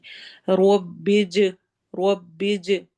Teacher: ربی میں رو کو موٹا پڑھنا ہے، آگے جیم سے ملانا ہے، جیم پہ قلقلہ ہو رہا ہے، ایکو ساؤنڈ ہوگی، آواز ہلے گی